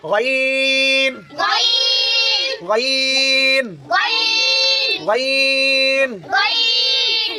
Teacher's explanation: হলকের শেষ হইতে উচ্চারিত হয়